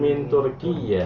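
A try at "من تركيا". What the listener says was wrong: Min Turkiya. Kia, nggak pakai ya bertasdid ya.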